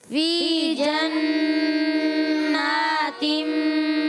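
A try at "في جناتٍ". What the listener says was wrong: अच्छा फी को भी खींचना है, या मद्दा है ना, हरफ मद्दा है, एक अलिफ खींचना है। फी जन्नातिम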